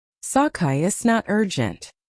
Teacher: A native speaker might drop the beginning of it's and it's again.